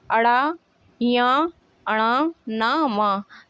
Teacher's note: ये सभी व्यंजन आपके नाक से उच्चारित होते हैं। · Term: नासिक व्यंजन